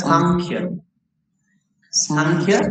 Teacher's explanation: তাহলে ক বর্গীয় ধ্বনি যেহেতু বসেছে, অনুসার উচ্চারণ হবে ক বর্গীয় ধ্বনি নাসিক্য